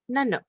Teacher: you end with the Q and the Q is pronounced further back in your throat